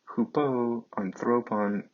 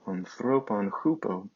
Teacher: The accent does shift to that first syllable of the preposition when it follows its noun. This is something called anastrophe.